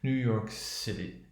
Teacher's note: she really comes down at the end when she says new york city